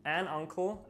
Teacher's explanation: starts with the letter u but it's pronounced with an ah sound turning it into an uncle as it's still a vowel sound